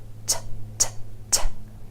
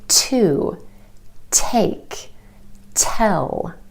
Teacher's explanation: It's clear, it's concise, it's distinct. It's made by taking your tongue tip and tapping it on the ridge behind your top front teeth. T, t, t. You hear this sound at the beginning of words like to, take, tell. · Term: true T